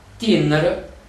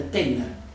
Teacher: il dittongo IE diventa E, quindi Tinner diventa Tenner